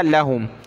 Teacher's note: لام کو کھینچنا نہیں ہے اوپر کی طرف، ٹھیک ہے، لام پر زبر ہے، صرف زبر کی لمٹ میں ہم نے اس کو پڑھنا ہے۔